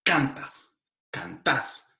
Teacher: en las variedades voceantes ellos no dicen cantas, ellos dicen cantás. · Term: patrón acentual